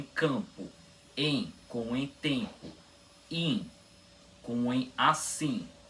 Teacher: quando vemos em, in, no final de uma sílaba, o M nunca é pronunciado. A única função que a letra M tem no final das sílabas de vogais nasais é representar que a vogal tem som nasal.